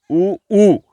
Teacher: ऊ की आवाज जो है वो ओष्ठ से आ रही है, होठों से आ रही है, इसलिए इसको ओष्ठ इसका उच्चारण स्थान माना जाएगा, और इसकी नाम ध्वनि होगी, उसका हम नाम देंगे ओष्ठ्य।